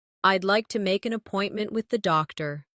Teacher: Keep the stress on appointment so the listener understands the purpose.